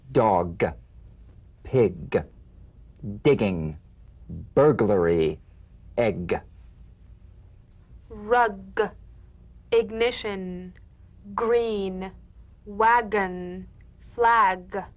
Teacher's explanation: of the back of the mouth without tightening pressing or pushing you'll feel a crisp tap and a voiced pulsation of the back of the tongue · voiced tongue back plosive consonant g place the back of the tongue in gentle contact with the